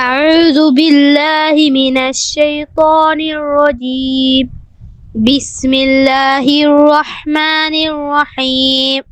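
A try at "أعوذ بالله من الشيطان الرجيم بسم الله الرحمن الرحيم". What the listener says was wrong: এবং আউযু বিল্লাহ এই দুইটা র যেন আরো মোটা হয়।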